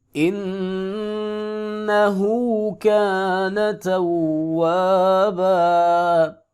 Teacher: نا کو لمبا نہیں کریں گے کیونکہ اس کے اوپر صرف زبر ہے